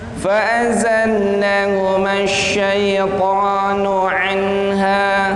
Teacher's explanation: Di sana ada nun mati bertemu ha, suaranya harus jelas